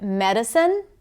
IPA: medəcəne